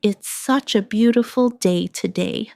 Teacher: Stress beautiful to express the feeling.